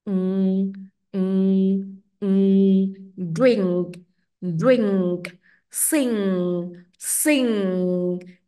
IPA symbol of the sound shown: ŋ